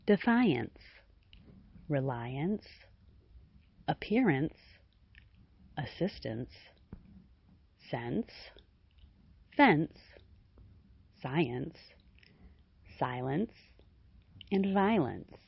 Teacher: Ants and ants are suffixes that form nouns, usually describing a state or equality. The vowel of the final syllable is reduced greatly to the point where it sounds simply like ants as in defiance, reliance, appearance, assistance, sense, fence, science, silence, and violence.